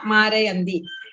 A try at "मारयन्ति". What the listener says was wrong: Marayanti. It sounds like Marayandi. You have to consciously pronounce it clearly as Marayanti and not Marayandi. You have to consciously pronounce it as Marayanti and not Marayandi.